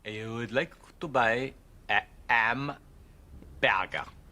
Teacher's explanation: H dropping that's more familiar to us now, i.e. H is being dropped before vowels